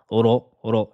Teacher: la lettre ra qu'il faudra prononcer de façon emphatique et faire l'emphase et l'arrière de la langue qui va gonfler. Attention à ne pas dire ro en avançant les lèvres et en prononçant ru.